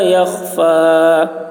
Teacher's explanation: خا میں قلقلہ نہ ہونے پائے، اس کا خیال رکھنا ہے